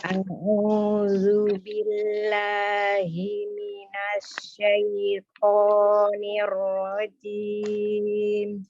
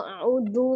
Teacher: Tapi sebenarnya di bacaan taut itu adalah huruf zal ya. Huruf zal itu ujung lidahnya ada di ujung gigi seri atas, tetapi dia tidak menempel kuat.